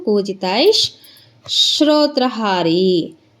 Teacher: ಅಲಿಶುಕಪಿಕರಾಜಿ ಕೂಜಿತೈಷ್ ಅರ್ಧ ಶ, ಯಾಕೆಂತಂದರೆ ವಿಸರ್ಗದ ಮುಂದೆ ಶೋ ಇದೆ, ಅದಕ್ಕೆ ವಿಸರ್ಗ ಏನಾಯಿತು ಅರ್ಧ ಶ ಆಯಿತು.